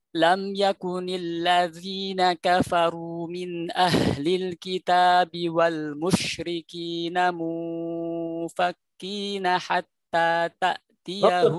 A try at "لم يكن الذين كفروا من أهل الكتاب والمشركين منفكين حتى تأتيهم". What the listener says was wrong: نطق الغنة أكثر من ذلك.